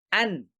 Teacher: তার মানে নুনটা উচ্চারিত হচ্ছে, নুন সুকুনটা উচ্চারিত হচ্ছে আন, এভাবে উচ্চারিত হচ্ছে, গুন্না হচ্ছে না এখানে আন। তার মানে এখানে নুনের উপর সুকুন চিহ্ন মানেই হচ্ছে নুনকে আপনাকে উচ্চারণ করেই তার পরবর্তী হারফকে উচ্চারণ করতে হবে।